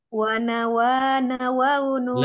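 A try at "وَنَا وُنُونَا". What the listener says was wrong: Lebih cepat lagi Bu. Wana waununa. Temponya.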